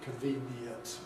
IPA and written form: kənˡviːniənt (convenient)